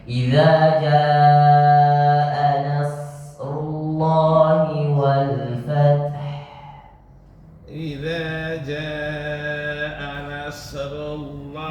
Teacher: Nasrullah, panjangin maksudnya desisnya biar keluar panjang.